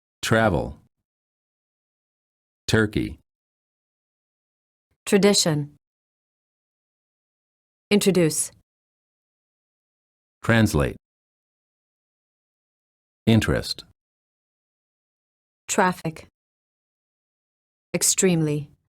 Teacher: When the T is followed by an R sound, the T changes and becomes an almost ch sound.